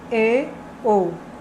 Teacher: Segundo, vogal média alta. A mandíbula está semi-fechada.